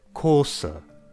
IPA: koːsə